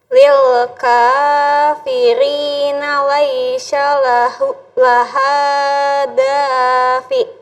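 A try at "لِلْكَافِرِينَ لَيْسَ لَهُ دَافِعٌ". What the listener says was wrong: Lahu. Lil kafiri. Oh, Laisha. Kalau Laisha, kalau bedakan sa, kalau sa nggak ada titiknya. Kalau sya ada titiknya 3. Nah, jadi ini nggak pakai titik. Laisa. Lil kafirina laisa.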